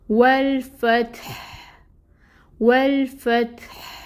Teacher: ہا کیونکہ اینڈ پہ آ رہا ہے اب ہم نے اس کو ساکن کر دینا ہے، پیش نہیں پڑھنے، تو ہمس کو ہم واضح کریں گے، ٹھیک ہے؟